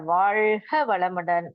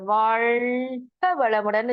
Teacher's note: நம்ம வாயால சொல்றோம் இந்த நாக்கு மேல போய் படுறது கொஞ்சம் சிரமம்தான் ஆனா இந்த வாழ்க வளமுடன் சொல்லி வாழ்த்தும் போது அந்த நுனி நாக்கு அது அப்படியே நல்லா வளைஞ்சு மேல போய் தொடுது